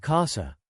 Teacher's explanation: in the word Kasa house the stress is on the first syllable